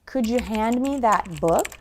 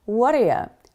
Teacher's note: Connect could and you to sound like could ya. We link these sounds together because that's just how our pronunciation flows more smoothly when we think about how we produce the sounds in our mouths. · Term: linking